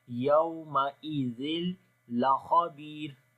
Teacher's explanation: لام کو باریک پڑھیں گے، خا کو موٹا پڑھیں گے · تنوین کے بعد لام آ گیا تو یہاں پر ادغام وداؤٹ غنہ ہوگا، بغیر غنے کے ادغام کریں گے ، یومئذ لخبیر، لام کو باریک پڑھیں گے، خا کو موٹا